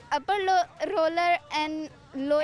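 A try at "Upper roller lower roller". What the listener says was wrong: एंड नहीं, अपर रोलर लोअर रोलर। This बोलना है।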